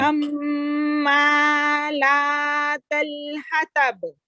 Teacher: मीम पर तशदीद आ गई, गुन्ना करे